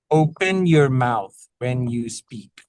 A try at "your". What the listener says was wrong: On your, you kind of went you kept it more closed. Open your mouth more. Your.